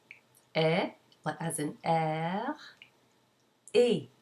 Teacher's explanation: the tongue is higher up in the front of the mouth and the lips are more spread